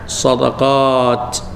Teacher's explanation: bila waqaf atas ta kena keluar angin